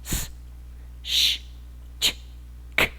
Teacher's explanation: Todas estas son consonantes sin voz.